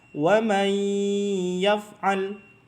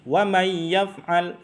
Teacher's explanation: Kurang gunnahnya, dengungnya kurang, maka ditahan selama 2 harokat. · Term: idgham bi gunnah